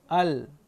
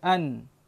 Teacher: Lam ini dia belakang sikit. Al. Kalau nun depan sikit, an.